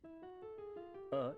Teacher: अ जिह्वा के मध्य भाग से